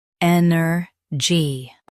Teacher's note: Stress en and keep er light. gy is quick.